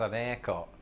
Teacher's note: Firstly, we're forever dropping H's.